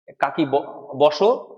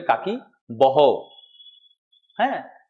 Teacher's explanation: ওই স কে হ বলি আমরা ট কে ড বলি